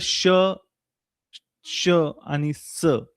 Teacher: उष्म आहेत उष्मे म्हणतात किंवा घर्षके म्हणतात याचं कारण असं की यांचा उच्चार करताना हवा ही जोरात सोडली जाते म्हणजेच कॉम्प्रेस करून पुढे पाठवली जाते म्हणजेच घर्षण होतं